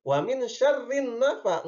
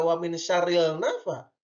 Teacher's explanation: Karena alif lamnya tidak jelas, dimasukkan ke huruf yang kedua yaitu nun. Jadi wa min syarrin nafa, enggak wa min syarril nafa. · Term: idgham